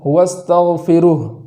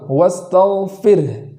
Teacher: را پر جو جزم ہے وہ متحرک نہ ہو جائے ، بعض مرتبہ ایسا سننے میں آتا ہے وَاسْتَغْفِرُهُ، فِرُہ نہ